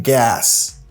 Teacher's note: Il écrit à S, il prononce comme gas. Il pas prononcé comme Z.